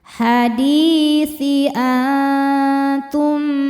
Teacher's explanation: Di mad tabi'i dhahiri karena ada ya sukun sebelumnya kasrah, maka huruf dal panjang 2 harokat. Hadithi antum.